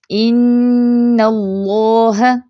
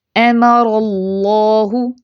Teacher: نون سے ہی موٹا کرنا سٹارٹ نہیں کر دینا، صرف اللہ کے لام کو پر کرنا ہے